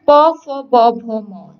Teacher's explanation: প, ফ, ব, ভ, ম দুই ঠোঁটকে স্পর্শ করছে, দুই ঠোঁটকে স্পর্শ করছে বলে বা ঠোঁট বা ওষ্ঠ, ঠোঁট বা ওষ্ঠকে স্পর্শ করছে বলে এগুলো হচ্ছে ওষ্ঠ বর্ণ